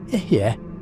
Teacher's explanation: The pronunciation is Ehyeh, with the emphasis on the first syllable. The eh sound is open, relaxed, like the beginning of egg. The eh sound ends with a slight aspirated breath, almost like a sigh. · The eh sound is open, relaxed, like the beginning of egg. The eh sound ends with a slight aspirated breath, almost like a sigh. When you vocalize this, the resonance should be in your chest, in the heart center, not in your throat or your head.